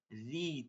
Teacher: একটু চাপ দিয়া নিচের দিকে চাপ দিয়া রি, চিকন করে পড়া